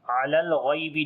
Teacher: غین کو موٹا پڑھیں گے، یا لین نرم پڑھیں گے